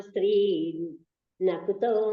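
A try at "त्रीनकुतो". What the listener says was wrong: కాదు, స్త్రీన్ అన్నప్పుడు అకుతో నకుత కాదు, అకుత అంటున్నా. చదవండి.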